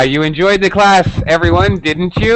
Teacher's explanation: he uses falling intonation because the speaker is sure